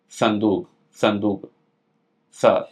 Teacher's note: जो जीभ होगी वो जीव दांत से टच करते हुए जाएगी।